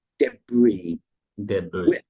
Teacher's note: with the S on the end is silent